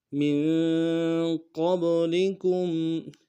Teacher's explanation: میم کو نون ساکن کے ساتھ ملانا ہے، یہاں پہ اخفا کریں گے